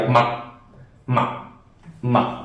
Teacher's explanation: So when there's a dot below, it's another tone, and it's a quick, abrupt stop, a quick stopping tone.